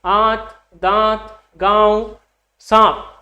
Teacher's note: दांत में आपका आ के साथ में जो नाक से साउंड आ रहा है, नासिक की ध्वनि आ रही है, तो वो हो जाएगी आपकी अनुनासिक, क्योंकि यही तो इनकी विशेषता है।